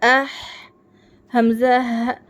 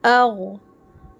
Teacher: غین اور خا حروف مستعلیہ ہے، تو اس کو فل ماؤتھ میں پڑھنا ہے، منہ بھر کر پڑھنا ہے